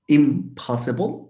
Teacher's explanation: The nasal becomes an m, it becomes bilabial because after it we have a bilabial stop, which is p. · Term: assimilation